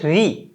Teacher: अब जब री बोलते हैं स्वरों में, तो री बोलते वक्त जब जीभ जहां टकराती है वो मूर्धन्य पर टकराती है।